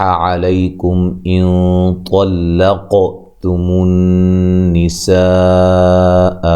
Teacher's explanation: نون مشدد پہ غنہ ضروری ہے، اور یہ سین پہ جو مد ہے یہ مد واجب ہے۔